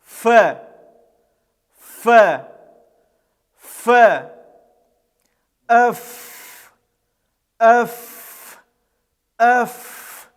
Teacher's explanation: Буква фаун произносится, когда внутренняя часть нижней губы прижимается к кромке верхних зубов. Это щелевая согласная, глухая согласная, произносится без участия голоса, и она является мягкой.